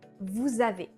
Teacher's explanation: we link the final S of vous with the A of avez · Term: liaison